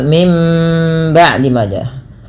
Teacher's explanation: Kemudian pada lafal mim ba'di maja, bunyi suara nunnya diganti dengan suara mim, dan ini kita istilahkan dengan bacaan iklab dan ditahan suara nya 2 harokat.